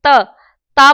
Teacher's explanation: दंत आप समझ जाएंगे, जब आप बोलेंगे ता बोलेंगे तो आपकी जो जीभ है वो दांतों से टकराएगी, इसलिए इसको दंत दंत दंत्य वर्ण कहते हैं।